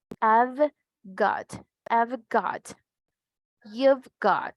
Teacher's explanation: ¿Se recuerdan que tenemos una V? El sonido es fuerte con vibración